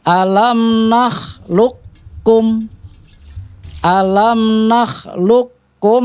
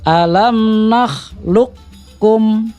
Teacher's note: huruf qalqalahnya itu akan dilebur kepada huruf Kaf artinya hilang jadi akan masuk ke huruf Kaf Jadi bukan qqolah lagi huruf kaf-nya tapi langsung ke huruf Kaf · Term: Idgham mutaqoribin